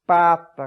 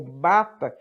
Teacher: porque a diferença é apenas de uma surda com uma sonora. A única diferença fisiológica entre pá e bá é que numa as cordas sonoras, as cordas vocais vibram mais.